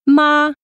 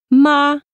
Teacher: This is a high-pitched tone that remains on the same pitch. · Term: first tone